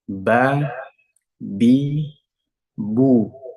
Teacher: bertemu dengan gigi seri atas sekarang kedua bibir yang pertama itu persentuhan kedua bibir menghasilkan huruf ba